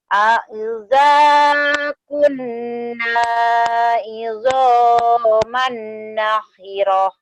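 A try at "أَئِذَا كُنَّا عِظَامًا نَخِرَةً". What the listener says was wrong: Nakhirah pendek ya. Lagi.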